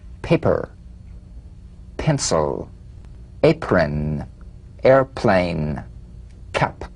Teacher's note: The unvoiced labial stop consonant. The whispered tap of this drumbeat P is played with a light springing apart of the lips